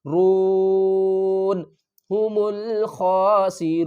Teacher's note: وقف کی صورت میں نون کو ساکن کریں گے